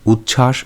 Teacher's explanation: যেমন উৎ যুক্ত শ্বাস থেকে তৈরি তৈরি হচ্ছে উচ্ছ্বাস শব্দটি এখানে পূর্ববর্তী খন্ডত ও পরবর্তী ধ্বনি তালব্যস দুটি পরস্পরের প্রভাবে পরিবর্তিত হয়ে কাছাকাছি বা প্রায় একই রকম ধ্বনি চ ও ছ তে পরিণত হয়েছে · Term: পারস্পরিক বা অন্যান্য সমীভবন